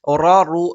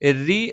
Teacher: റ റു എന്ന് ഉച്ചരിക്കുന്ന സമയത്ത് നാവിന്റെ മധ്യഭാഗം മുകളിലേക്ക് ഉയരും. അതേ സമയത്ത് രി എന്നുച്ചരിക്കുന്ന സമയത്ത് നാവിന്റെ മധ്യഭാഗം മുകളിലേക്ക് ഉയരുന്നതല്ല.